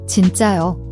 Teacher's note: It's a sharp, strong J sound, like the J in jump but without aspiration. Also, remember to raise your intonation at the end for a clear question.